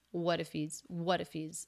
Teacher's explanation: he drops the H in he's, so it's just the E vowel and the Z consonant.